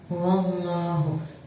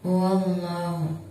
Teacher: Di situ ada lam jalalah didahului huruf waw yang berharakat fathah, maka cara bacanya tebal. Wallahu. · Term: lam jalalah tafhim